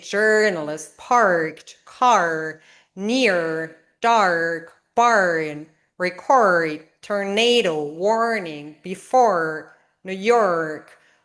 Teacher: All the Rs are clearly pronounced.